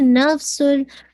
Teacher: नफ्सुल, ठीक है, नफ्सुल, तनवीन के बाद लाम है तो इदगाम है लेकिन विदाउट गुन्ना, ठीक है, इदगाम तो कामिल है, तनवीन के बाद आवाज लाम में मर्ज हो गई है, लेकिन जो विदाउट गुन्ना, गुन्ना नहीं है, ठीक है।